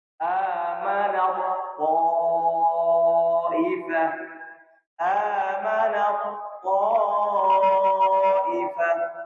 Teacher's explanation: Ketika ta mati bertemu dengan ta langsung melebur, karena ta-nya enggak sama sekali disentuh.